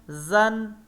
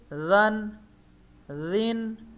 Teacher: زا سے وسلنگ کے ساتھ زن